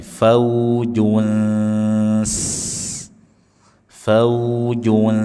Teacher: bunyi nun kita baca dengan samar sambil lidah atau dekat ujung lidah kita persiapkan mengucapkan huruf sin. Jadi suaranya mendekati. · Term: ikhfa hakiki